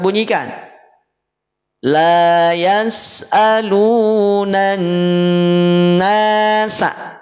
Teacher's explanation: Alif lamnya tidak dimunculkan langsung dimasukkan pada huruf nun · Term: alif lam syamsiyah